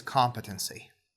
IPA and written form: ˈkɑːmpɪtənsi (competency)